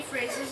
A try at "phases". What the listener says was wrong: Phases, not phrases. Phases.